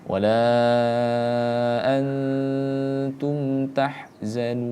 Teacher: Biarlah ngalir, kita panjangkan dulu mad tabi'i, mad arid lisukunnya, terakhir baru kita munculkan huruf nunnya